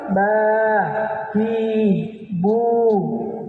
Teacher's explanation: kalau B yang diinginkan ada makhraj tersendirinya dia keluar di syafatain di kedua bibir